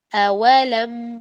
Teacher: واو کو باریک ہی نکالنا ہے لیکن ہونٹوں کے گول کر کر وہ نکلتا ہے. ہونٹوں کو گول کرتے لیکن اس کے بعد آپ نے آواز اس کی اسمائلی فیس میں لے جانی ہے.